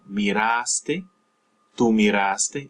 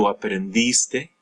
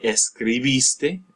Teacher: Now, for the tu form is haste for the AR, miraste, and here you're not stressing the final syllable, you're just stressing that A or the I, as the case may be